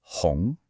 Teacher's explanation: The correct way to say it is second tone. Listen to how my voice goes up.